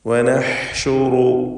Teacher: ഹ തൊണ്ടയുടെ മധ്യമാണ് മഖ്റജ് എന്നത് അറിഞ്ഞുകൊണ്ട് വ്യക്തമായി ഹ ഉച്ചരിക്കുക